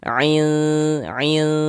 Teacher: Cara membacanya ikhfa itu dibaca samar dan berdengung. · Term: ikhfa hakiki